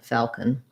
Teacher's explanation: We don't really say that O, we don't really say falcon or falcon, falcon. So basically no vowel there or a tiny little schwa going from the K to the N, falcon. Falcon, that's definitely a dark L, and I'm not overly pronouncing that L. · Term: syllabic N